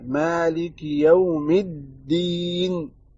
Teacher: دال کو تھوڑا سا کھینچنا ہے